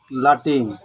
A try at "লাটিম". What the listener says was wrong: লা টিম। টিং কন বলেন? লাটিম ম না ওটা, লাটিম লাটিম।